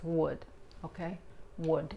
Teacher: La D en inglés es más fuerte, la lengua, la punta de la lengua nunca se mete entre los dientes frontales, no es would, es would.